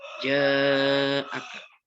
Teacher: Yang ketiga, ja'aka, atau hukum bacanya mad wajib mutasil atau mad tabi'i, jim ketemu dengan hamzah. Cara bacanya dibaca panjang 6 harakat atau 6 ketukan.